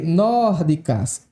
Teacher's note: é uma palavra proparoxítona, ou seja, a tonicidade recaiu aí sobre a antepenúltima sílaba